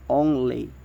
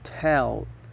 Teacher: Voicing is voice, and the place of articulation is alveolar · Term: old sound